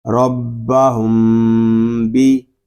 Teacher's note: اب یہاں میم ساکن کے بعد حرف با آ گیا ہے، یہ میم ساکن میں اخفاء شفوی ہو رہا ہے، اس کو ہم غننے کے ساتھ پڑھیں گے